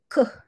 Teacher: Ke bunyi belakang. Bunyi dekat anak tekak tu. Ke. Dia tak nampak tau.